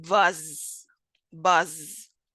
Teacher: the phoneme z, which is voiced, alveolar, and a fricative, such as in buzz, buzz.